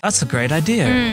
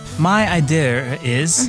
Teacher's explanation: the R sound would be added after idea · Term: R sounds